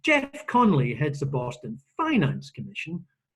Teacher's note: the word finance has got the bump on it and not Boston